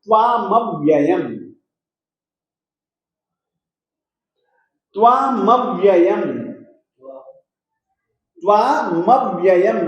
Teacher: त्वामव्ययम् में त जो है वह बिना स्वर का है, न इसमें अ है, न ई है, न उ है, कुछ भी नहीं है, केवल अकेला त है, मूल व्यंजन है और बिना स्वर का है।